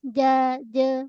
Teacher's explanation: Tengah lidah dengan lelangit keras. Ja. Bukan je.